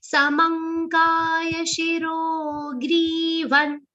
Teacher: Samang anuswar is pronounced like nga.